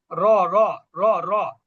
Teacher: র মোটা হবে কিন্তু ধ্বনিটা উঁচু হবে না